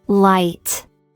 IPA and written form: laɪt (light)